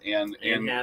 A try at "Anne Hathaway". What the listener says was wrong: Not Anna, just Anne. You did say Anna. Anne